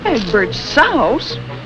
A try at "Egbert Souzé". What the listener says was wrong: It isn't pronounced Souse. Accent grave over the E. Egbert Souzé.